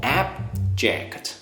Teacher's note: remember the stress on the first syllable